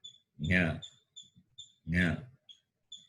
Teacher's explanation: We know these letters are pronounced from the palate. Therefore, the fifth letter will be palate plus nose. Palatal plus nasal. Therefore, it is pronounced as Nya.